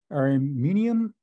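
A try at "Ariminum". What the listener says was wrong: Arminum. There's no IUM. Arminum.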